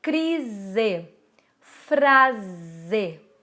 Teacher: um s entre duas vogais a gente pronuncia com o som de z